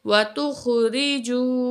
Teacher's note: واو مد ہے، 2 کاؤنٹ کھینچ کے پڑھیں گے